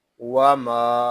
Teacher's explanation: میم کو ہم ایک الف تک کھینچ کر پڑھیں گے کیونکہ یہاں پہ الف مدہ ہو رہا ہے